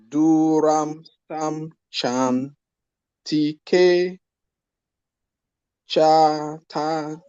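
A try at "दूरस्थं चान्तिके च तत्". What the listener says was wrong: Very good. We have to practice again and again.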